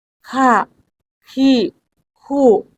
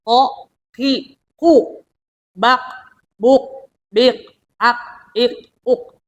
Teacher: ka itu ada napas yang sedikit mengalir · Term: hames